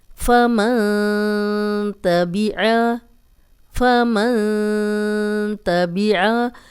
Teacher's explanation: जो जबान की नोक है वह नरमी के साथ मसूड़ों के साथ लगाई जाएगी तो यह गुना अदा होगा · جو زبان کی نوک ہے وہ نرمی کے ساتھ مسوڑوں کے ساتھ لگائی جائے گی تو یہ غنہ ادا ہوگا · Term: इफा